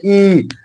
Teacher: ई का उच्चारण स्थान जो है वो तालू होगा